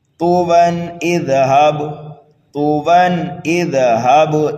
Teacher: اگر آپ یہاں پر وقف کریں گے طویٰ پر تو 2 زبر کو الف سے بدل دیں گے، طویٰ، ملا کر کے اس طرح پڑھیں گے۔ تنوین کے بعد دیکھیے حروف حلقی میں سے حمزہ آ رہا ہے، اس لیے یہاں پر اظہار کریں گے